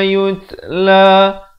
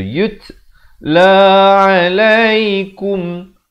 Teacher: Yut ada bunyi hamasnya, bunyi angin itu.